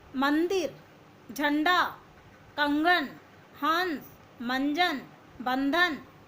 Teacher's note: ये सब वर्ड जब आप बोलते हो तो आपके नाक से हवा निकलती है।